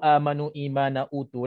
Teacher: Hamzah datang sebelum huruf mad dalam satu perkataan dan juga hamzah itu dibaca 2 harakat. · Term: mad badal